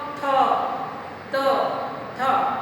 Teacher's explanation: हर एक के उच्चारण में हमारी जीभ हमारे दांतों को छूती है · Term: दंत स्पर्श